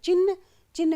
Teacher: चिन्ह में भी न और ह आगे पीछे हो गए तो इनके आगे पीछे होने से वर्तनी संबंधी अशुद्धि या त्रुटि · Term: विपर्यय